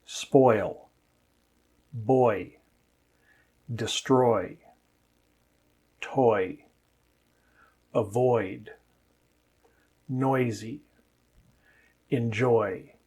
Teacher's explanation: I should have said before a voiced consonant or at the end of the word, because when the sound comes at the end of the word, it stretches out just like it does when it comes before a voiced consonant